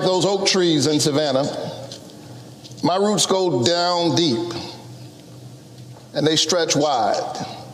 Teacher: he's going very slowly with lots of pauses for effect